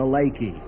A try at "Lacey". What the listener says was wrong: Lacey. It's pronounced with a soft C.